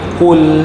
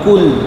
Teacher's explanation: Qul ni tebal qaf, ya. Qul, jangan kul, jangan sebut kul nipis, ya.